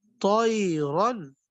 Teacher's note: طا اور را دونوں موٹے ہوں گے، طا اور را دونوں کے دونوں موٹے کر کے پڑھیں گے